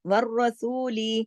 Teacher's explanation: والرسول میں را موٹا، باقی سب باریک، اور لام کو زیادہ نہیں کھینچنا